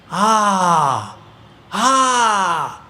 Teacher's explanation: ആ എന്ന് പറയുന്ന സ്വരം നാവ് പോലും ഇല്ലെങ്കിലും വിരോധമില്ല തൊണ്ട തുറന്നു വരുന്ന ശബ്ദമാണ് ആ ആ അതിങ്ങനെ വിസ്തൃതമായിരിക്കുന്ന ഒരു ശബ്ദം തൊണ്ടയിൽ നിന്ന് പുറപ്പെടുന്നതാണ് അതേമാതിരി ഒരു